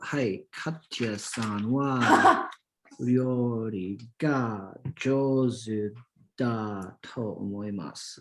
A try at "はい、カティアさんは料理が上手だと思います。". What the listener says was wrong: はい、完璧です。Wonderful.